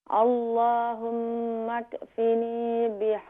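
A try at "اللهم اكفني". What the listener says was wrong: یہاں مکفینی, یہاں کیف کے اوپر قلقلہ نہ کریں, کنٹرول کریں. اللہم اکفینی.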